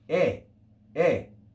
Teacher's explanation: And the diphthong oi, oi, is also in church pronunciation just e, e.